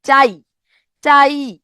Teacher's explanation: ইতে কিন্তু আমি থেমে যেতে হচ্ছে আমাকে। এটা পুরোপুরি উচ্চারিত হচ্ছে না, টেনে আমি এটাকে দীর্ঘ করতে পারতেছি না। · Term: অর্ধ স্বরধ্বনি